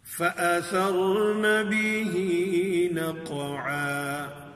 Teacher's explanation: پھر فَأَثَرْنَ بِهِ نَقْعًا میں قاف پر قلقلہ آ رہا ہے